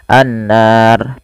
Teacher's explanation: ketika ro didahulu sebelumnya fathah maka dibaca tebal